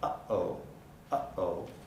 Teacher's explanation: of articulation is stopped uh its place of articulation is glottal people often think it's a voiceless stop but in fact it's neither voiced nor voiceless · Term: glottal stop